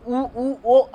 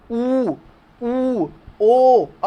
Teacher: देखिए आपकी जीभ जो है एकदम पीछे जा रही है, पीछे आपके जो पीछे जा रही है, जो कंठ है जहां से आवाज आती है पीछे की तरह एकदम जा रही है, पीछे सुकुड़ रही है जीभ। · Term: पश्च